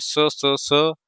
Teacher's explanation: ऊष्म ऊष्मा बाहर निकलती है। तो इसको हम कहते हैं ऊष्म व्यंजन।